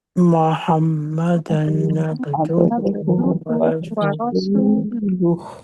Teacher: اس میں محمدن پہ ٹائم نہیں دینا، یہ اظہار کا ہے کہ سیدھا ہم نے پڑھنا ہے